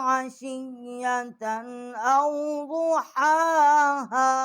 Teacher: آگے اس کا جو حرف ہا ہے اس کو اقصائے حلق سے ہم نے اس کا مخرج نکالا ہے